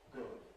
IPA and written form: gʊd (good)